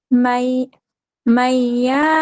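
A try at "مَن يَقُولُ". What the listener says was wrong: এখানে কিন্তু মাদ নাই। মাই ইয়াকুল, মাই একালিফ গুন্না, মাই ইয়াকুল আল্লাই ইয়াকদির।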